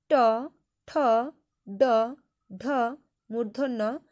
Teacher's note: এদের উচ্চারণ হচ্ছে পশ্চাৎ দন্তমূলে। এদেরকে বলা হচ্ছে মূর্ধন্য বা পশ্চাৎ দন্তমূলীয় বর্গ।